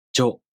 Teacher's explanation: To pronounce Jo, the tongue moves from the [ʑ] sound to the [o] vowel.